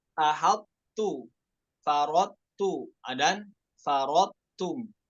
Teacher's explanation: Bukan dibaca sebagai idgham kamil, namun dibaca idgham naqis. Tetap ada huruf to-nya itu sifat idbaknya ya, pada huruf to-nya.